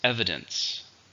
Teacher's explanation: 3 syllables stresses on the first